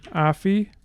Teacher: we are going to have fixed initial stress